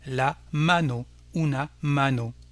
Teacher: Un mot plus court, le mot main, qui est féminin en espagnol, même s'il se termine par un O, qui est une voyelle, on accentuera donc l'avant-dernière syllabe, qui ici, bien entendu, est la première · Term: accent tonique